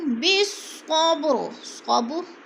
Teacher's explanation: صاد موٹے حروف میں سے ہے، پر کر کے پڑھا جائے گا اور با پر قلقلہ کریں گے، یعنی قلقلہ کا معنی ہے لفظ کو ہلا کر پڑھنا، جنبش دینا۔